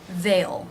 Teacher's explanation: The TH, th, voiced sound, A as in say diphthong, and the dark L sound, ol, they'll.